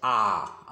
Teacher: विवृत मतलब खुला, यानी पूरा खुला रहेगा मुंह, इसकी संख्या 1 होती है। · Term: विवृत स्वर